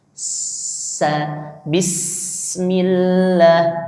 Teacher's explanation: Sin itu keluarnya dari ujung lidah bertemu dengan gusi bagian bawah. Ah kemudian anginnya itu keluar di sela-sela gigi bagian depan. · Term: huruf sin